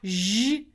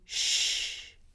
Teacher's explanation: Our next pair is zh and sh. Again, made in the exact same place in your mouth, just one is voiced and the other's unvoiced.